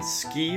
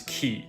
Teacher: when the S isn't there, you add a lot more of an H sound after the K. This H is called aspiration, and in English it often helps to distinguish words, but it's not required.